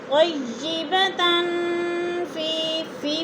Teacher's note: طیبة، تن دو زبر تنوین، فا حروف اقفا میں سے آ گیا ہے تو ادھر اقفا ہو رہا ہے، غنہ کریں گے، آواز کو ناک میں چھپا کر پڑھیں گے. جیسے طیبة فی میں یا مدہ ہو رہا ہے، اس کو بھی تھوڑا سا لمبا کرنا ہے.